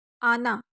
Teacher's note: حمزہ زبر آ، نون زبر نا، آنا۔ یہاں پہ ہم نون کو لمبا نہیں کریں گے۔